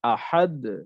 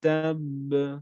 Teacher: এই প্রত্যেকটি কিন্তু আমার শব্দের মাঝখানের কলকলা ছিল, যার কারণে কলকলাটা আমার খুব উঁচু আওয়াজে হয় নাই, অর্থাৎ খুব বড় আকারে হয় নাই, নরমাল কলকলা হয়েছে, বাট নরমাল। কিন্তু যখন শব্দের লাস্টে যখন কলকলা হরফ থাকবে তখন একটু বড় আকারে হবে, তো একটু বড় কলকলা হবে